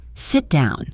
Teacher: It becomes sit down. You're not saying two T sounds, just one slightly longer one that connects the words.